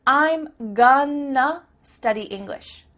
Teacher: that word to Simply becomes uh